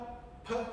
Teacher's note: So M N P. So the P pp sound is the same as English but always forceful. Real puff. Really. So you got to really give her on the P.